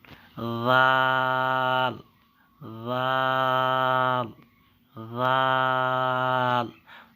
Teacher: জালকে নরম করে, পাতলা করে পড়তে হবে এবং 4 সেকেন্ড টেনে পড়তে হবে।